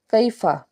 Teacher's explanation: یا ساکن سے پیچھے زبر، تو یہ یالین کا قاعدہ ہے، معروف طریقے سے نرمی سے اس کو ادا کریں گے، کھینچیں گے نہیں